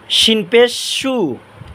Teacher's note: জিহ্বার মাঝখান তালুর মাঝখান